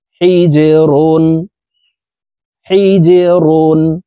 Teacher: দুই পেশ রুনুনুন হা জিম জের হিজে প্রিয় দর্শক এখানে দেখুন জিম হরফ কলকলার হরফ নিচের দিকে ধাবিত করে ধাক্কা দিয়ে উচ্চারণ করতে হবে